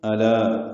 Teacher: لام باریک پڑھیں گے، الف مدہ بھی باریک ہے.